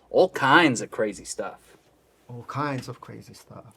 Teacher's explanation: shift the emphasis from all to kinds